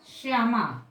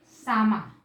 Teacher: या का जो स्वर है वो शा में जुड़ जाएगा, श्यामा, और तालव्य के स्थान पे दंत सा कर दिया तो सामा